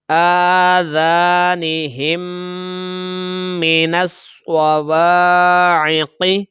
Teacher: نون کو ہم سواد کے ساتھ ملائیں گے